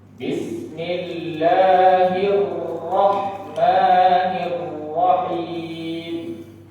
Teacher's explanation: Harusnya ro itu punya 2 getaran saja.